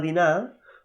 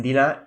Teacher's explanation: realment diem dinar i la R no sona